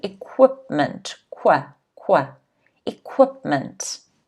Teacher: The stress is on the second syllable again, so it's equipment.